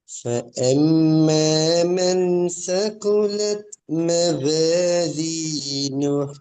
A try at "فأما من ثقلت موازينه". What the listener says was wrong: இந்த சகுலத் நாக்கு வெளியே வர்றது சேட சவுண்ட் போதாது. சகுலத். சகுலத் காற்றின் மூலமாக தான் இந்த எழுத்து உச்சரிக்கணும். சே சவுண்ட் வரக்கூடாது. எஸ்ட சே சவுண்டுக்கு போகக்கூடாது. சகுலத். சகுலத். சகுலத் நாக்கு கொஞ்சம் வெளிக்கு வந்துச்சுண்டா சேட சவுண்ட் வரும். நாக்கு எங்கட பற்களுக்கு உள்ள இருந்துச்சுண்டால் சேட சவுண்ட் வரும். சகுலத். சகுலத். எஸ், வெளியே வரணும், காற்றோடு வரணும். காற்றோட சகுலத்.